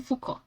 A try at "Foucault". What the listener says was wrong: Foucault. No, no se pronuncia la otra letra, es Foucault.